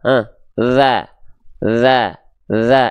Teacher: huruf dzal itu dari segi suara dia punya sifat namanya rokhwah